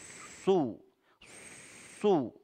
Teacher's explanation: huruf Shad ya berdesis jadi adanya penyempitan di mulut sehingga suara ee menajam ya Ada desisan su su jadi tebal karena dia huruf Istia